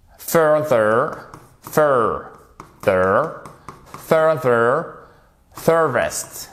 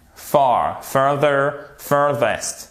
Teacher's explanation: Faut bien faire l'accent tonique qui est sur la première syllabe.